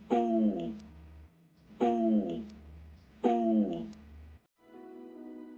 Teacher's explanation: It's similar to the Japanese sound ooh, but the key point is to round your lips when pronouncing it. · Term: long vowel